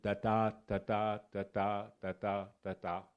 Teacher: il y a une syllabe inaccentuée puis une syllabe accentuée et il y en a cinq comme ça